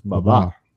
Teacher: the accent is on the second syllable on the second ba ba ba oh yeah okay Baba well